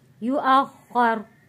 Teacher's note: तो यहाँ पे जो पेश है रॉ के ऊपर, ये जज़म में तब्दील हो जाएगा, रॉ साकिन हो जाएगी।